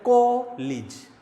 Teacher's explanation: बोला जाएगा कॉलेज, तो को पे स्ट्रेस है